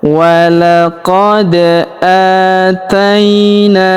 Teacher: huruf a kita panjangkan dua harakat karena terdapat alif kecil di atasnya. Aaina huruf ta kita ayun sekali karena di depannya terdapat ya sukun. · Perhatikan huruf da kita pantulkan atau kita qalqalahkan karena berharokat sukun ya.